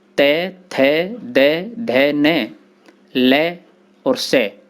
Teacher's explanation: इनके उच्चारण में जिह्वा दांतों में लगती है।